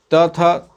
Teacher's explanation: त, थ दंत से उच्चारित होने वाला है